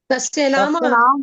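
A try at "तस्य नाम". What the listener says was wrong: ఎవరో ఇంకా నామ్ అంటున్నారు. ఎవరు నామ్ అని ఎవరు అంటున్నారు? నామ, తస్య నామ్ కాదు. నామ్ మాత్రం కాదు, తస్య నామ.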